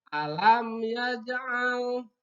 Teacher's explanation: A itu makhrajnya ada pada tenggorokan. Sama dengan hamzah juga. Tapi posisinya A itu berada di tengah-tengah. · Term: Ain